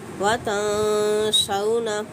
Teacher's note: نون ساکن کے بعد یہاں پہ سین ہے، اخفا کا قاعدہ اپلائی کیا جائے گا